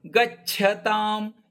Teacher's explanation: ಗ ಮೇಲೆ ಅಘಾತ ಯಾಕಂದ್ರೆ ಚ ಕ್ಕೆ ಮಹಾಪ್ರಾಣದ ಛ ಒತ್ತು ಇದೆ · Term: ಆಘಾತ